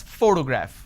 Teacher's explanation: I pronounce this as photograph, which means I'm stressing on the first syllable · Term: word stress